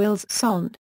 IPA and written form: il sɔ̃ (ils sont)